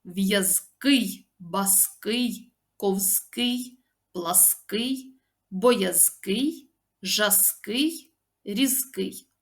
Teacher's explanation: наголос у цих прикметниках падає на останній склад